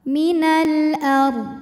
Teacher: huruf ro sukun dibunyikan secara tafkhim sebab huruf sebelumnya berharakat fathah maka dibacanya tebal · Maka lam sukun dibaca dengan jelas atau disebut dengan idhar qamari. Minal ard, huruf ra sukun dibunyikan secara tafkhim, sebab huruf sebelumnya berharokat fathah. Maka dibacanya tebal. Minal ard. Dan walaupun dodnya disukunkan, ini harus tetap terbaca ya.